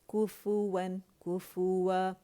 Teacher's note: پہلے کاف کو گولائی دیں گے، کاف باریک ہے اس کو گولائی دیں گے ، گولائی کے ختم کر کے فا پہ جائیں گے، فا